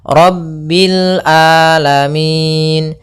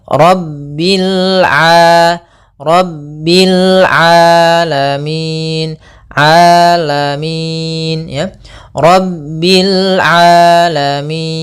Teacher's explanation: Kemudian di sini Rabbil sama lamnya mengalir, kemudian di sini huruf ain. Hati-hati jangan sampai merubah huruf ainnya menjadi hamzah.